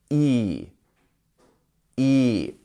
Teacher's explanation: So we have our 2 dots here, which means we have a lengthened vowel, E instead of I.